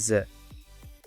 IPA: z